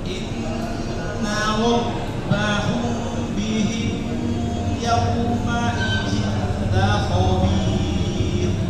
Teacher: mim bertemu ba, hukumnya apa? Dengung kan?